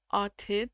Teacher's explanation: I think the TH is like a hard T sound